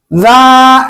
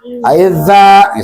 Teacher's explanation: ujung lidah, ujung lidah dengan ujung gigi yang atas. Za, jangan da, jangan za.